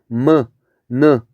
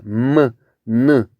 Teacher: 입안의 통로는 막고 공기를 코로 내보내면서 내는 소리. 그래서 느 이렇게. 그 다음에 유음 같은 경우는 혀에서 나는 소리. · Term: 비음